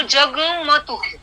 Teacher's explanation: कुछ लोग नाक से उच्चार करते हैं, तो वो नाक से उच्चार करना जो है वो भी उन्होंने यहाँ पे ये किया है, स्पेसिफाई किया है। तो संधि के कारण ये जो ग है वो 2 बार आ जाता है। और जो दूसरा आता है वो अनुनासिक आता है, यानी नाक से उसका उच्चार करना होता है।